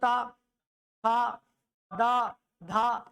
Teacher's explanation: स्पर्श किससे होगा दांत से होगा